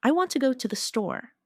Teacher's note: The stress is on want and store. The words to and they are much softer.